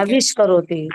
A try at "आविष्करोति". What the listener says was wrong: पर दंत स का मूर्धन्य स करना है और कुछ नहीं करना है, अर्थात क्या हो